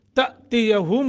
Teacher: حمزہ ساکن ہے جھٹکا دے کے پڑھیں گے